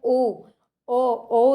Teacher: अगर बोल के देखेंगे तो इसमें जो ओठ है ना वो कहीं ना कहीं काम करते हैं और कंठ काम करता है। · ओ जो होता है ना, ये हमारा कंठोष्ठ ध्वनि का उदाहरण है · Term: कंठो ध्वनि